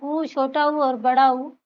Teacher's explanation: तो ऊ का उच्चारण स्थान यहाँ पे जो है दिया ही हुआ नहीं है, ओठ होते हैं। ओठ से जो है ऊ जो है उच्चारित होते हैं। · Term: ओष्ठ्य